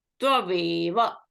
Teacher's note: So u is followed by a dissimilar vowel or a diphthong a. So u is replaced by v. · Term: yan sandhi